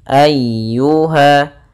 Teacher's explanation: Ya termasuk huruf lembut dan dia harus ditekan karena dia tasydid.